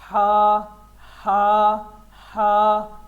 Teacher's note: حلق کے درمیان سے یہ ادا ہوتا ہے